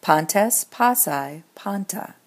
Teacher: the accent is persistent, here trying to be a circumflex on the alpha of the first syllable, but turning into an acute if that alpha is short